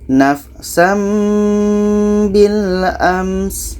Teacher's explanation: Contoh, nafsam bil ams. Ams, sin ini sifatnya hamas, maka ada anginnya